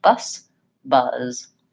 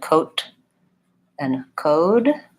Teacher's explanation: this word is longer bus buzz so the length doesn't really I don't linger on that Z that's not where I'm adding the length it's on the vowel sound bus buzz same thing happens for words like coat and code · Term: vowel is slightly longer